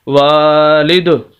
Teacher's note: اگر وقف کریں گے تو یہ 2 زیر کو ختم کر دیں گے، اور دال ہے، دال حروف قلقلہ میں سے ہے، یہ ساکن ہو جائے گی تو یہاں پر بھی قلقلہ ہوگا، اور پھر ہم اس کو پڑھیں گے وقف کی حالت میں والد۔